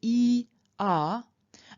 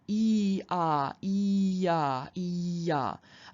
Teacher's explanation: I don't make a conscious break between those two vowels a y will slip in very easily